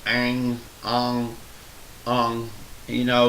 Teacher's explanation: it sounds like the ng in the word English. Only in this case, the ng is put as close to the back of your throat as possible. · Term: ayin